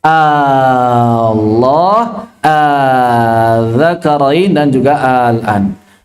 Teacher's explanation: Ketika kemasukan hamzah, maka cara membacanya adalah mengubah hamzah yang kedua, hamzah wasal, menjadi mad, sehingga dibaca panjang 6 harakat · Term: mad faraq